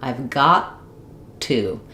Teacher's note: I don't have two aspirated T's in a row. Instead, when a T comes at the end of a word and the next word starts with a consonant sound, like another T, I don't let that first T out. So, that's what's called a stop T or an unreleased T. · So, that's what's called a stop T or an unreleased T. So, I go up to make the T of got. I've got to, but I don't let it out. I just let this T out and I have basically one T sound.